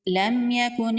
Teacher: یہاں پر اظہار شفوی کا قاعدہ ہوگا۔ میم ساکن کو ظاہر کر کے پڑھیں گے، میم پر غنہ نہیں کریں گے۔